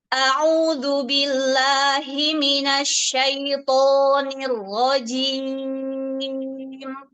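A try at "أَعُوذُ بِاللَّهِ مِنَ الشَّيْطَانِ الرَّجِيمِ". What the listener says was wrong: A'udzu langsung, jangan dijeda.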